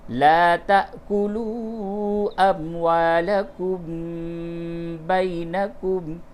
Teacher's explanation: تا کے بعد یہ الف کے اوپر حمزہ ہے، یہاں پہ جھٹکا ہوگا۔ لا تأکلوا اموالکم بینکم، میم ساکن کے بعد با ہے، اس جگہ پہ آپ غنہ کیجئے۔